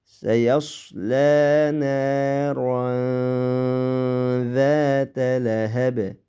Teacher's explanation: Zata alifni 2 harakat miqdori inchikalat so'zimiz. Zata lahab bani qalqala qilib to'xtaymiz